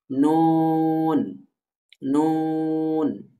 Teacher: জিহ্বার আগা তার বরাবর উপরে তালুর সাথে লাগিয়ে নুন উচ্চারিত হয়। এই যে এই হরফটা জিহ্বার আগার, জিহ্বার আগা তার বরাবর উপরের তালু, অর্থাৎ জিহ্বার আগাটা স্বাভাবিকভাবে যার, যে ব্যক্তির স্বাভাবিকভাবে যেখানে গিয়ে লাগে, সেটাকেই সেই তালু ধরা হবে।